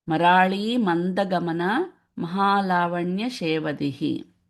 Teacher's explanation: the Anuswara changes to N. So this Mamda becomes Manda.